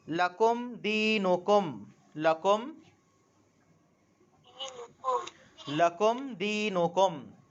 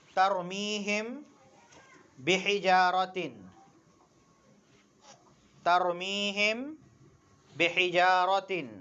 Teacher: میم ساکن کو ظاہر کر کے بغیر غنہ کے جلدی پڑھیں گے، اس کو اظہار شفوی کہتے ہیں.